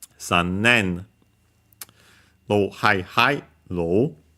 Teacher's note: it's a Chinese compound, but be careful because it's accented on the ne.